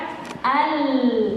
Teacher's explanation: suaranya keluar dari pinggir, dari pinggir. Nah, karena ujung lidah kita ini kan nempel, nah, makhrajnya lam nempel al, sehingga suaranya miring, miring ke pinggir, baru keluar, gitu ya. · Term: al-inhiraf